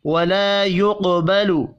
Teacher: ولا الف مدہ ہے، 1 الف کے برابر کھینچ کر پڑھیں گے